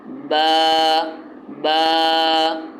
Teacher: تو با کو ایک الف کے برابر کھینچیں گے، شروع میں جو اس کی جو ادائیگی ہے وہ دونوں ہونٹ مل کر ادا ہوتی ہے، با کی دونوں ہونٹ ملیں گے تو با کا مخرج ادا ہوگا، اور آخر میں جھٹکا محسوس نہ ہو، اس کی خاص مشق کی جائے۔